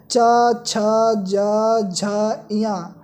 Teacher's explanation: इन वर्णों को उच्चारित करते समय हमारी जो जिह्वा होती है वो तालु को स्पर्श करती है, इसलिए इसका उच्चारण स्थान तालव्य होता है।